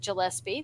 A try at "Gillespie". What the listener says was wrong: Gillespie. Gillespie. Not J.